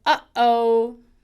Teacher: If you say, uh-oh, like you're talking to a 3-year-old and they just dropped their toy on the floor, uh-oh, that is the easiest way to find a glottal. The chords just barely kiss together, and you get that little start of a vowel.